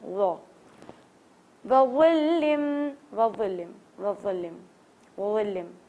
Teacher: ज़ा का मखरज आपको याद होगा, ज़बान की टिप को थोड़ा सा मोटा करके आपके जो सान है फ्रंट टीथ है उसके ऊपर लगाना है